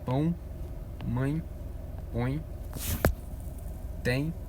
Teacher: o som ele é pronunciado com a voz anasalada